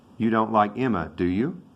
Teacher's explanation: the rising tone meant he was not sure that he really liked emma or not